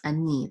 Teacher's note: So it's ani. The accent is on the second syllable.